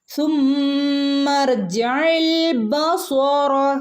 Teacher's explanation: ഇവിടെ നമ്മൾ ഹംസത്തുൽ വസ്ലിന് ശബ്ദമില്ല, നടുക്ക് വരുമ്പോൾ ഹംസത്തുൽ വസ്ലിന് ശബ്ദമില്ല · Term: ഹംസത്തുൽ വസ്ൽ